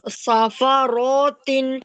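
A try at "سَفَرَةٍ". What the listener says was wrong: सफा रॉट क्यों होगा? खींचे मत, खींचे नहीं, मैं कह रहा हूँ। सफा रॉट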